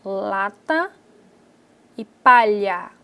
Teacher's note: a passagem de ar nas laterais ela acontece na cavidade bucal quando o meio da boca encontra-se obstruído então o ar passa pela lateral da boca